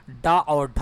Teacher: जब हम लोग उच्चारण करेंगे ड और ढ तो हमारा जो जीभ है ऊपर का तालू में जाकर टच होता है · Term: मुर्धन